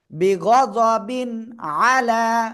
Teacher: তানবিনের পরে ইজহারের অক্ষর আইন আসছে স্পষ্ট করে পড়তে হবে